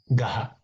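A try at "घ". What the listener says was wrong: Gha, Mahaprana.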